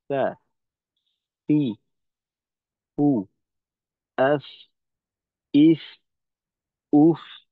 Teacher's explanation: ফায়ের উচ্চারণটা হবে নিচের ঠোঁটের ভেজা অংশের সঙ্গে লাগবে সামনের উপরের দুই দাঁতের আগা